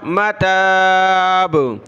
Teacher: با پر قلقلہ ہوا